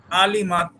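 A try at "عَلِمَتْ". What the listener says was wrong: না, গলার মাঝখান নিতে হবে আওয়াজ। জটিল বানালে এখানে টান হয়ে যাবে, তখন আ হয়ে যাবে। স্বাভাবিক যদি আইন পরিপূর্ণভাবে উচ্চারণ করা সম্ভব নাও হয়, তবু স্বাভাবিক পড়ার চেষ্টা করতে হবে, জটিল করা যাবে না।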